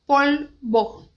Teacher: o L, a ponta da língua, vai lá em cima